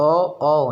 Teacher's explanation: ओ ये कंठोष्ठ है, कंठ और ऊष्ठ ये 2 चीज़ों से मिलके बनती है